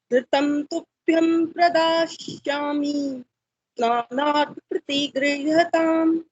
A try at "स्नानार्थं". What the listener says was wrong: स्नानार्थ में बिंदी लगी है, स्नानार्थम।